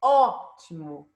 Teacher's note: a antepenúltima sílaba ó que é a sílaba tônica nós falamos Ótimo então a sílaba tônica é a antepenúltima sílaba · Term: proparoxítona